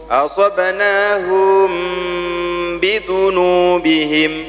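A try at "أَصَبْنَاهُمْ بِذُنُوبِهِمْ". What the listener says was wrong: Tadi sudah dibuka tapi nggak lama itu. Bukaannya harus sama, ya. Asabnahum. Beda kan suaranya? Bukan hu, tapi asabnahum.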